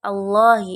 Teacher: lam tafkim karena ada lafal Allahi yang sebelumnya adalah harakat dhammah itu maka cara membacanya adalah harus ditebalkan